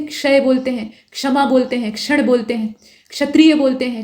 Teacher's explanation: इसमें कोई भी जीभ सटाने की आवश्यकता नहीं। और जो क्ष है उसमें हल्का सा क का उच्चारण आता है, क्योंकि क यहाँ पर होता है, ठीक।